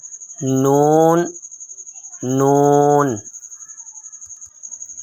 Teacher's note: نون ادا کرتے وقت صرف اوپر والے 3 دانتوں کے مصوروں سے لگتی ہے